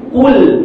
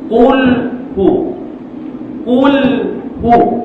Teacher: Hujung lidah naik pada makhraj lam.